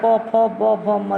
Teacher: प फ ब भ म, होंठ हमारा होंठ हिलता, प फ ब भ म, देखिए होंठ हमारा चिपकता है, तो ये होंठ से उच्चारण करते हैं। इनका उच्चारण स्थान ओष्ठ है।